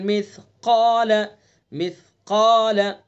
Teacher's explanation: قاف کو پر پڑھیں گے، قاف کے ساتھ الف کو بھی پر پڑھیں گے